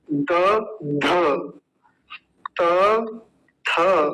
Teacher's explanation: त में कम वायु लगती है तो अल्प प्राण बोलेंगे थ में ज्यादा लगती है तो महाप्राण बोलेंगे